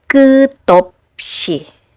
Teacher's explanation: the silent consonant borrows the sound of the previous final consonant. So instead of dissecting this word into three syllables by saying 끝, op, i, you blend the sounds together and it becomes 끝없이.